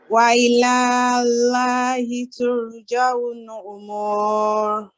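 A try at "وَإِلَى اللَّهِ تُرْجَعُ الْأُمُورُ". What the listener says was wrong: Okay, this is the thing which I noticed, that here you need to connect this lam with this lam mushaddad without any pause or prolongation.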